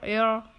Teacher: زبان کے سائڈ کے حصوں کو لیفٹ اور رائٹ سائڈ کے داڑھوں کو لگانے سے رو ادا ہوتا ہے۔ رو پر جزم آیا ہے، جزم والی رو کو رائے ساکنہ کہتے ہیں۔